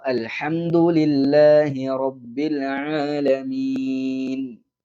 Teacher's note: റബ്ബിൽ ആലമീൻ എന്നുള്ളിടത്ത് പല ആളുകളും റബ്ബിൽ ആലമീൻ എന്ന് സുക്കൂനായ ലാമിനെ കളഞ്ഞിട്ട് ഐനിനെയും കളഞ്ഞിട്ട് റബ്ബിൽ ആലമീൻ എന്ന് പറയാറുണ്ട്. റബ്ബിൽ ആലമീൻ അവസാനത്തെ സുക്കൂനായ നൂനിനെയും കേൾക്കണം